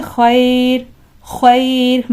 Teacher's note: را ساکن سے پہلے یہاں پر یا ساکن آ گئی، لہٰذا اس را کو باریک پڑھیں گے